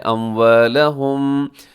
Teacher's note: یہاں میم ساکن کے بعد با ہے تو یہاں کیا ہوگا اخفاء شفوی